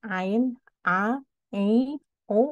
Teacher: huruf Ain itu dari pangkal tenggorokan bukan dari hidung keluarnya